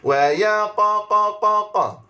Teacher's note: qaf yang baris sukun, maka qaf itu qaf qalqalah